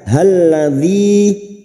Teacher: ada mat yang bertemu dengan hamzah di lain kalimat, mat jaiz munfasil. 5 harakat kita panjangkan